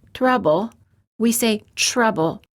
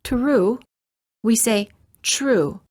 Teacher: When the T is followed by an R sound, the T changes and becomes an almost ch sound. Instead of saying trouble, we say trouble. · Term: T plus R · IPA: /tʃr/